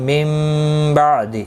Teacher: میم ساکن کے بعد متحرک با آیا ہے، یہاں پر قلب ہوگا، اخفاء شفوی ہوگا.